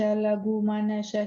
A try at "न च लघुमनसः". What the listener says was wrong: Nacha lagu manasash. Sa and then a ish. Manasash. Sa is sounding like a sha. Manasash.